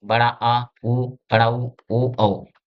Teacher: पश्च जीभ के स्थान से इनका उच्चारण करते हैं।